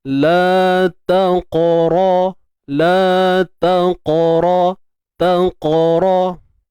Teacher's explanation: Pangkal lidah ni terangkat dan menutupi, kita kata bersentuhan lah. Bersentuhan dengan langit lembut di bahagian belakang ni. Langit lembut dia makin belakang ni makin lembut. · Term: isti'la